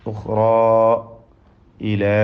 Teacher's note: ഉഖ്റാ എന്ന് പറയുമ്പോൾ അലിഫും ഇലാ എന്ന് പറയുമ്പോൾ അലിഫും, ഒന്ന് തഫ്ഖീം മറ്റേ തർഖീഖ്, അതാണ് വ്യത്യാസം.